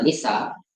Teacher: the tone is changed from tone two to tone one · The compound sunshine consists of ni and sa, so it will be nisa, and the tone is changed from tone 2 to tone 1, and also the long vowel is shortened here